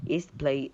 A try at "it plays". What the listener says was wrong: is play. You pronounce this one is plays. but the right one, it should be it plays, right? It's the sound it.